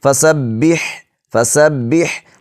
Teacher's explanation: ہا کو ہلکے درمیانی حصے سے ادا کریں گے